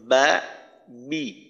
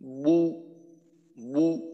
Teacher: যেমন মনে করেন বা বি জবরের সময় এবং জেরের সময় বা বি ঠোঁটটা খোলা রেখে করলাম। আর পেশের সময় একেবারে যতটা সম্ভব ঠোঁটটাকে গোল করে বু বু উচ্চারণটা একেবারে ঠোঁট গোল অবস্থাতেই বের হবে।